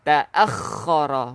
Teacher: Kha kita bukan kena tebalkan, cumanya kita kena kasarkan sikit.